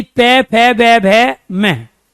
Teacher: मेरे होठ दोनों खुल रहे हैं, बंद हो रहे हैं। इसी वजह से उच्चारण के दौरान हम किसका, ओष्ठ का प्रयोग कर रहे हैं, और इसी ओष्ठ को हम क्या कहते हैं, इसी ओष्ठ को हम होठ कहते हैं।